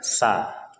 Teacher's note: Sa itu kita mengeluarkan udara dari celah-celah gigi kita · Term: sin